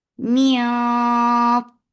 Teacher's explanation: this ikhfa is heavy, so your tongue should be lifted up, and you're keeping the sound in your nose for a longer time.